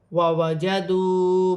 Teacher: واو ساکن سے پہلے پیش ہے واو مدہ بن رہی ہے، ایک الف کی مقدار کھینچ کے پڑھا جائے گا.